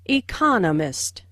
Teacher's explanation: with the stress on the second syllable